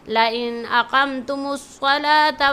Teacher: line اقمتم میں قاف اور صلاۃ کے صاد کو موٹی آواز سے پڑھیں گے